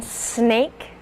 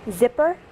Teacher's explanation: These are alveolar fricatives, and so that means that when you make either of these sounds, your tongue will sit just behind your front teeth near the alveolar ridge. So for the S sound, I've noticed that the tongue will sit slightly lower than when you make the Z sound.